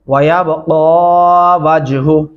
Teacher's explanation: वयबक़ा वजहु पढ़ते हैं, वयबक़ा पढ़ने से आप काफ को लंबा नहीं करते, जो कि काफ के ऊपर खड़ी जबर है, आवाज लंबी होती है